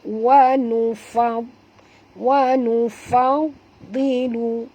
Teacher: Fa ni kita masukkan ke dalam dad ini dan bacanya tebal kerana huruf dad termasuk huruf isti'la